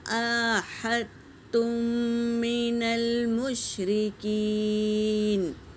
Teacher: دال پر سکون ہے تو یہاں قلقلہ ہوگا، اور میم ساکن کے بعد میم آیا ہے تو اسے پہلے میم کو دوسرے میم میں ملا کر غنّے کے ساتھ پڑھیں گے، اسے ادغام شفوی کہتے ہیں۔